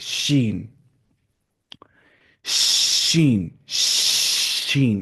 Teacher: जुबान का बीच और इसके मुकाबल ऊपर का तालो, जुबान का बीच है ना, शीन, शीन तो आसान है, शीन, शीन, शीन ऐसी आवाज करनी है, वाली आवाज।